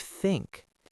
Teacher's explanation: You're creating friction between your tongue and your teeth.